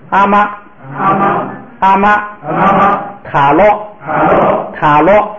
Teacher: 低声调变成了高平调